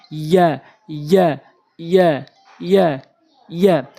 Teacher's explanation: জিহ্বার মাঝখানের অংশটা উপরের তালুর সঙ্গে লাগাবেন ইয়া ইয়া ইয়া ইয়া ইয়া।